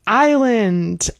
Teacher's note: Yeah, that's one where we never pronounce the s.